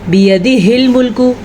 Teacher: ہاں جو ہے وہ چھاتی سے نکالنا ہے۔ اگر آپ اس کو ملکو کر کے پڑھتے ہیں تو آپ غلط پڑھتے ہیں۔